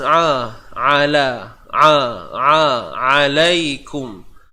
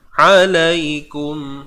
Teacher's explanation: Huruf ain. Sempit kan? Tengah kerongkong. Alaikum. Lai di sini bacaan lunak.